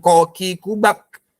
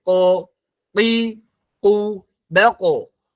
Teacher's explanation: Ditempelkan ko dan qaf itu nanti ada letupannya ya. Ada letupannya.